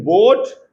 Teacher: It is a long vowel. It is a back vowel. It is rounded and in the between half open and half closed positions.